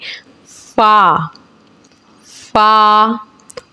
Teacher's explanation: ऊपर के दांतों के किनारे नीचे होठ के तर हिस्से से अदा होता है